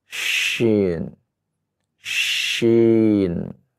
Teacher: Perbedaannya ketika mengucapkan dengan titik 3 adalah keluar dari tengah lidah. Kita keluarkan dari tengah lidah, bukan dari ujung lidah.